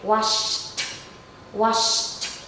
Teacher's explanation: So wash, the sh, is voiceless, and the t, the ed, okay, it's also voiceless. So we pair them together, voiceless sound plus voiceless sound.